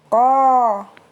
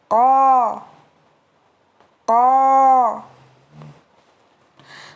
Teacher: Makhraj huruf qaf yaitu pangkal lidah bertemu dengan langit-langit lunak atau langit-langit daging. Pangkal lidah bertemu dengan langit-langit lunak atau langit-langit daging.